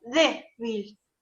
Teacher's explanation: Yo sé que la sílaba que se acentúa es la penúltima